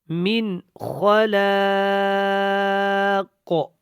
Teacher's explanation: من کے اوپر اخفا نہیں کرنا کیونکہ نون ساکن کے بعد خا آ گیا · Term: اظہار